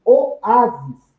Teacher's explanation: Oásis também é uma palavra pluralizada, terminada com is. No caso de oásis, sílaba tônica é a penúltima, logo é uma paroxítona.